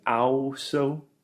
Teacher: he is separating the A and the U sound and saying them separately, which is really wrong